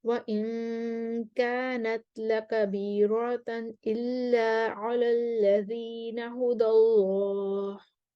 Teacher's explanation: रॉ को मोटा करेंगे, रॉ को पूरा पढ़ेंगे कानून के लिए।